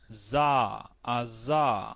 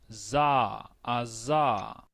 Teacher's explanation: Que usted sepa qué es la S silbante, qué es la S vibrante y que sepamos que aunque vemos allí una Z, eso representa una S vibrante